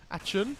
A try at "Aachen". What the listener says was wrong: Where did the G come from at the end? That's what I want to know.